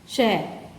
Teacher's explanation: ये संघर्षी व्यंजन है। श के उच्चारण में जीभ तालु को स्पर्श करती है